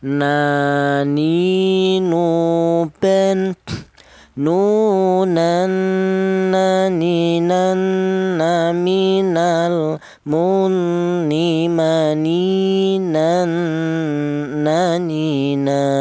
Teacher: huruf berasal dari ujung lidah sudah menyentuh langit-langit mulut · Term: huruf nun